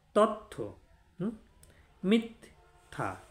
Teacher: থয়ের অল্পপ্রাণ কি ত, তাহলে আপনাকে তটা দুবার উচ্চারণ করতে হচ্ছে।